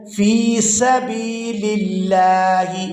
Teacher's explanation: سین کو جب ادا کرتے ہیں تو سیٹی کی مثل آواز نکلتی ہے